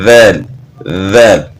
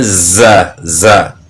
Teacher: زا میں سیٹی کی مثل آواز پیدا ہو رہی ہے